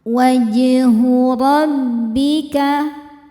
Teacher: huruf jim sukunnya sukun asli dan ada di tengah bacaan. Cara bacanya dipantulkan dengan pantulan yang kecil. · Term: qalqalah sughra